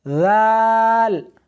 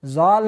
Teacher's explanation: دال اور اس حرف کو سا کی طرح نرمی کے ساتھ ادا کرنا ہے۔ ذال زال نہیں، سختی نہیں کرنی بلکہ نرمی کے ساتھ پڑھنا ہے